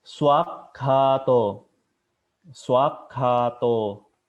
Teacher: Jadi pakai teh yang ditekuk ke atas ya ke atas langit-langit